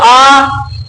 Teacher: कभी कभी आपने सुना होगा जॉनी जॉनी यस पापा वाला खेल, ओपन है ना, ओपन योर माउथ, तब वो कहता, तो वो कहता तो आ इसलिए है कि जब हम सबसे ज्यादा मुंह खोलते हैं तो एक ही स्वर है जिसमें सबसे ज्यादा मुंह खुलता है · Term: बड़ा आ